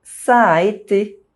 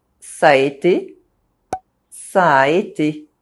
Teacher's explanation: there are two identical vowel sounds next to each other. You don't pronounce one of them differently to distinguish them. You simply say a longer sound. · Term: vowel links